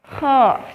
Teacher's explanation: Makanya huruf kha itu adalah salah satu huruf yang tebal. Jadi ketika mengucapkan huruf kha, maka pangkal lidah kita agak sedikit naik ya, sehingga jalannya udara atau jalannya udara itu berbenturan dengan langit-langit atas, sehingga suaranya itu menjadi tebal ya, agak tebal. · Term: al-isti'la